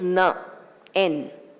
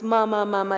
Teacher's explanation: tongue up touching the roof of the mouth and when you do that the sound becomes palatal it's not a labal sound you know the ma m is